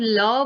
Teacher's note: ल पार्श्विक है। पार्श्विक का मतलब होता है उच्चारण में हवा जीभ के बगल से निकलती है। तो जब ल बोलते हैं तो ल में क्या होता है, मतलब हमारे जीभ वाले भाग को छोड़ के उसके अगल बगल वाले भाग से हवा बाहर आती है।